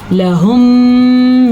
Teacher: لَهُم یہاں پہ غنہ ادا کرنا ہے کیونکہ میم ساکن کے بعد میم متحرک آ چکا ہے تو اس غنے کو ہم ضرور ادا کریں گے.